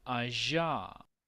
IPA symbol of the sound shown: ʒ